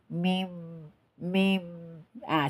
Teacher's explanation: huruf hijaiyah mim berada di kedua bibir, kemudian sebagian keluar pada bagian hidung, ya, keluar pada bagian hidung atau rongga hidung, ya, agar mendapatkan gunnah atau mendapatkan dengung dari rongga hidung atau disebut dengan al-khaisum.